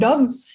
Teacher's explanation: Tapi ketika dalam dogs ya, itu lebih ke z, jadi voiced.